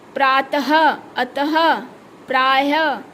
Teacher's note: विसर्ग का प्रयोग उच्चारण के समय व्यंजन के साथ ह की ध्वनि आती है। जब हम विसर्गों का उच्चारण करते हैं तो बोलने पर किसकी ध्वनि निकलती है? ह की ध्वनि निकलती है।